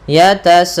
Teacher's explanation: panjangkan dulu sebagai 4 harakat baru di a-nya. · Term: mad wajib muttasil